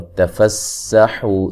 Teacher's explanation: سین کو باریک سیٹی سے ادا کریں گے